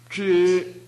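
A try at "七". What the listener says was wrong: 지금 파열이 약해서 그래요. 혀를 완전히 강하게 펴세요. 이 발음이 잘 안 하는 학생들은 혀를 이 모양을 만들어서 하루 종일 입천장에 붙이고 다니십시오. 학교에 올 때, 집에 돌아갈 때, 식사 시간에 줄을 기다릴 때, 혹은 다른 강의 들을 때 이렇게 해서 입천장에 붙이고 계십시오.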